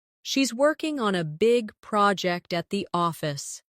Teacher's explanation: Stress working big project and office. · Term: rhythm drill